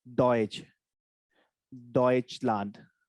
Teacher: When S is before CH, it is giving me sh. When T comes before sh, it becomes ch. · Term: the ch sound